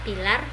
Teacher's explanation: Bunyi konsonan hambat bilabial tak bersuara